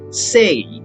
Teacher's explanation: now most american english speakers pronounce the word say with a diphthong rather than a single vowel